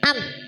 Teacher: Kalau kita membaca huruf ma itu memang sudah ada dengungnya tetapi tidak panjang. Gitu ya. Itu alamiah, dengungnya alamiah karena keluar dari rongga hidung.